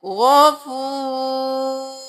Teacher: غین موٹا رو موٹا غفور. رو ساکن ہو جائے گا کیونکہ وقف ہے